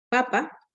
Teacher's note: en la palabra papa, que es una palabra que denomina a un tubérculo, posee acento en la penúltima sílaba